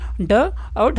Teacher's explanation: तो मेरे भाई इसी को बोलते हैं द्विगुण या उत्क्षिप्त व्यंजन।